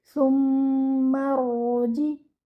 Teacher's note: The ra over here should be heavy and give it moderate time. Don't bounce your ra.